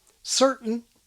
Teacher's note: an American glottal T that was safely tucked up before a syllabic N, certain, finds itself before an inserted or reinserted vowel, certain.